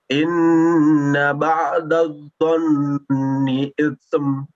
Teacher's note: Inna ba'dadh-dhann ada gunnah di situ, ditahan lagi.